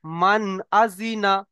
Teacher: তাই নুন সাকিনের আওয়াজকে বিনা গুণনায় জাহির করে পড়তে হবে